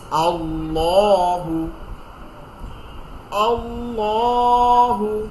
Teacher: মোটা করে গালের মুখের মধ্যে একটা মোটা এরকম গোল একটা খালি জায়গা করে আমরা এটা পড়ব।